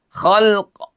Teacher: Ah maka terjadi pertemuan huruf sukun di sini fil. Setelah itu ada qalqalah di huruf qof ya.